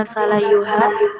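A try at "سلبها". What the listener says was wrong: Salabu. Titiknya 1 itu ya. Salabu titiknya 1 itu.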